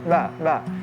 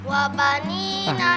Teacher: Ba dalam bahasa Arab harus ditipiskan.